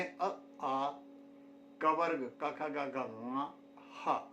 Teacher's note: ये सभी ध्वनियाँ ये हमें कंठ से प्राप्त होती हैं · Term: कंठ्याः